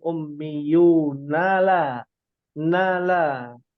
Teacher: Tapi kenapa di ayat 78 di sini ada wa minhum ummiyunala nala ya, berpindah huruf nun yang berfathah langsung berpindah tanpa dipanjangkan